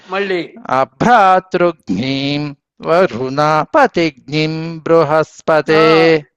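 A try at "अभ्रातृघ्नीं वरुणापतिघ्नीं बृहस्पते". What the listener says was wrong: వరుణపతిగ్నిం దీర్ఘం బాగా వినపడాలండి. అక్కడ ప్రతి చోట అంతే దీర్ఘమే, అనుదాతం అఘోర చక్షు రపతిఘ్నియే రపతిఘ్నియే ఏ యకారం స్పష్టంగా చివరికి పెడతారు. రపతిఘ్నియేది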